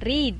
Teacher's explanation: Yaitu yang pertama, pelafalan I panjang dicontohkan dengan kata read. Jadi, read itu E dan A-nya dibaca dengan I panjang